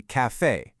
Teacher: Plus, that accent is essentially a massive neon sign telling you where the stress goes. It lands heavily on that second syllable, giving it a real punchy finish.